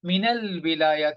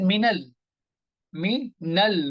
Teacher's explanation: if it is sandwiched between two words, then you will not pronounce alif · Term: Hamzatul Wasl